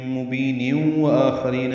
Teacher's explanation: مبین کے نیچے دو زیریں ہیں، تنوین ہے اور اس کو واو سے ملانا ہوگا، تو مبین ادغام ناقص ہوگا، غنہ کرنا ہوگا